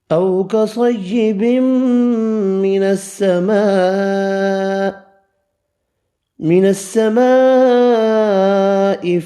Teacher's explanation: من السماء بڑی مد 5 الف کی مقدار میں کھینچ کر پڑھیں گے